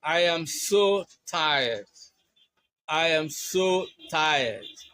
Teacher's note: in expressing sadness. you use uh a falling tone which is slow and low.